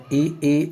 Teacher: इ ई अग्र स्वर है इ ई अग्र स्वर है आ मध्य स्वर है याद रखना